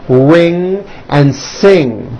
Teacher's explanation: Ing comes out of your nose. It's a combination of an N and a G, and it is found at the ends of words like ring and sing. And I want you to realize that there is not a K sound. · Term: NG sound